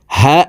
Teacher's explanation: হা আলিফ জবর হা হরফ হলুকের শুরু থেকে পড়তে হবে কারণ হার মাখরাজ হলুকের শুরু থেকে হবে